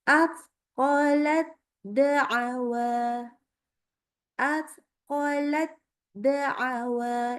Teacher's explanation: Waktu sukun ketemunya dal. Maka tidak lagi langsung tidak lagi ada hamasnya. Kenapa? Karena ta sama dal sama makhraj ya. Jadi langsung masuk ke dal dengan sempurna. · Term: idgham mutajanisain